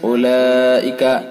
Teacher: حرف مد کے بعد حمزہ اسی لفظ میں، لہذا اس کے اندر مد متصل ہوگا